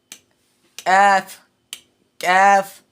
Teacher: কাফ হামস অর্থ বাতাস বের করা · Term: হামসের হরফ